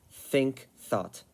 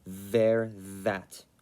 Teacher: the unvoiced is the sound that sounds harsher so like in think or thought the voice sound is the sound that sounds sort of more electric the one that sounds more vibratey and less harsh like in